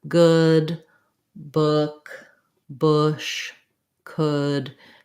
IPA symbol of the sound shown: ʊ